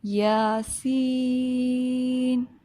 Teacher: یہاں پر جو سین ہے یہ بڑی مد ہے، اس کو ہم 6 سیکنڈ اسٹریچ کریں گے. ٹھیک ہے، 6 سیکنڈس.